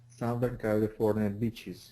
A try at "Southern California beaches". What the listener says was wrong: Yeah, get that TH a little bit more. Southern California beaches.